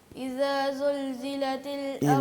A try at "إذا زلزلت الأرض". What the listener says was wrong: اذا زل، آپ کے ذال اور زا میں جو ہے نا وہ کافی حد تک خرابی ہے، وہ ٹھیک نہیں ہے.